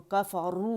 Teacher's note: رو کو باریکی سے ہم نے نہیں پڑھنا بلکہ اس میں رو زبان کی جڑ آپ نے اٹھانی ہے